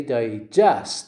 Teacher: When the word digest is a verb. How do we say it? We say digest. The stress on the second syllable.